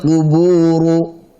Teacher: qu tebal, bu tipis, bu. Ru tebal lagi.